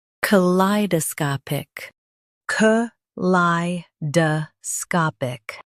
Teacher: Emphasize lie and soften sca.